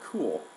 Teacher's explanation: When the back vowel oo is used, the lips are more rounded